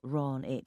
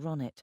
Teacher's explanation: He pronounced my name wrong as usual, putting the stress on the first syllable, Ron it, instead of the second Ronnet.